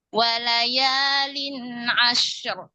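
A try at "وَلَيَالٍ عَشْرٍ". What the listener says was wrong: Walayalin ashar. Jangan terlalu lama di shinnya ya. Walayalin ashar.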